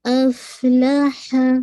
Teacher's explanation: ہمس فیل ہوگا آپ کو کہ ایئر بلو ہو رہی ہے، ٹھیک ہے، باہر نکل رہی ہے.